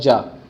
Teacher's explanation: जा है जो स्पर्श भी है और संघर्षी भी है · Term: स्पर्श संघर्षी